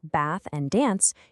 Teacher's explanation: Let's anchor this with a super famous example, the bath split. In northern England and general American, words like bath and dance use the short a vowel